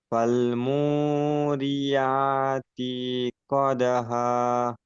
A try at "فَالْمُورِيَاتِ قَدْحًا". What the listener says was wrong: فالموريات قدحا। ইয়াতি, তিন আজান টান হয়ে যায়, তা যে তি একদম টান হবে না। فالموريات قدحا। কদ হা, হাটা একদম পুরো গলার মধ্যে উচ্চারণ হবে। কদ হা। হুম হার মাখরাজ পুরো গলার মাঝখানে।